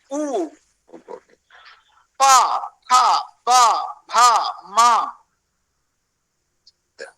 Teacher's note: तो उकार, अष्टादश उकार, पवर्ग, पाफा बाभामा और उपध्मानीय, इन सारे वर्णों का क्या उत्पत्ति स्थान होता है, ओष्ठौ, होंठों से निकलते हैं ये वर्ण, होंठों की उपयोग से। उ, पा, फा, बा, भा, मा, और ये उपध्मानीय भी होंठों की उपयोग से ही हम बोल पाते हैं।